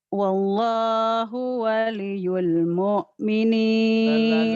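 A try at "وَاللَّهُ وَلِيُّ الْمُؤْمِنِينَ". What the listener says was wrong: Terlalu buru-buru. Wallahu waliyul. Ada ditahan.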